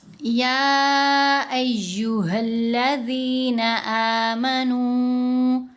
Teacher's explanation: اس میں مد والے لفظ سے الف جیسا حمزہ جدا لفظ میں آتا ہے۔ جیسے یہاں یا کے اوپر مد ہے، جس بھی لفظ میں مد ہے اس سے اگلا اس سے اگلا جو لفظ ہے وہ الف جیسے حمزہ سے شروع ہوگا. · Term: مد منفصل